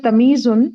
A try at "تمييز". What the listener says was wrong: دیکھیں یہ تمیز نہیں ہے. نہیں، تمییز. ییز دو دو یا ہے نا. یہ اردو والا تمیز نہیں ہے.